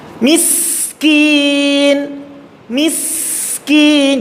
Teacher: Sin harus ada nahan di awal yang pertama, yang kedua ketika sukun betul-betul keterdengar sinnya, suara sinnya masih tetap berjalan, dan ketika hendak mengucapkan sinnya juga harus tekan sa bas seperti itu.